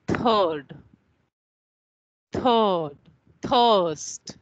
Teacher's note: There is another sound which we make with the center vowels. This is written in the same way as schwa, but it's a longer schwa